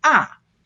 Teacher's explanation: just a low falling tone now that fourth tone is a you got to start really high and come down forcefully